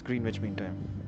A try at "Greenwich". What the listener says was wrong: It's Greenwich, not Greenwich. It's Greenwich. Yes, W is silent.